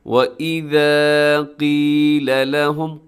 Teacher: قاف اپنے موٹا پڑھنا ہے، خاص طور پہ وہ موٹے حروف کے جن کے نیچے زیر ہو اس کا خاص خیال رکھنا ہے، کیونکہ اکثر لوگ اس کو باریک کر دیتے ہیں۔